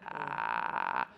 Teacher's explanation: some people call it a vocal fry I call it a squeaky hinge like a door